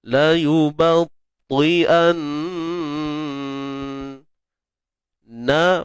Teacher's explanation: nun bersabdu ni wajibul gunnah, dengung, kadarnya lebih kurang 2 harakat.